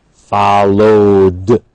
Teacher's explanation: we have d, because vowel, of course, is a voiced sound. So we have a voiced ending, followed.